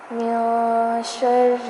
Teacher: من نون ساکن پر اخفا کیا جائے گا، یعنی نون کی آواز کو ناک میں چھپا دیں گے